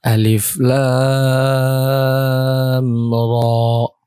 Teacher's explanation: Bacanya lamnya 6 harokat dan ra-nya itu cuman 2 harokat sebagai mad tabi'i harfi.